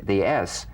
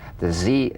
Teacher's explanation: the s is like the z except it's unvoiced so it's the same tongue placement as the z